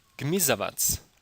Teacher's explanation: The word gmizavac, reptile in English, has the voiced velar plosive stop g and the bilabial nasal m side by side